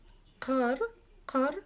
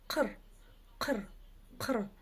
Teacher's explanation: чтобы прочитать букву К с хвостиком снизу, нужно просто отхаркнуться через букву К обыкновенную